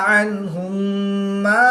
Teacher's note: میم ساکن کے بعد دوسری میم ہے تو یہاں پر ادغام شفوی ہوگا یعنی غنہ کر کے پڑھیں گے۔ میم ساکن میں ادغام شفوی ہوگا اور تنوین میں ادغام مع الغنہ ہوگا تو ان دونوں میں ہم غنہ کر کے پڑھیں گے۔